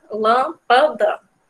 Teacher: todo mundo entende que o lã, ele sai de uma maneira mais forte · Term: sílaba tônica